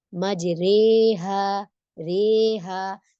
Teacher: امالہ زبر زیر بیچ کی کیفیت ہوتی ہے جس میں ہم پورا پراپر زبر نہیں پڑھتے اور نہ ہی زیر کی کیفیت رکھتے، اس میں ہم درمیان کا رکھتے ہیں، ٹھیک۔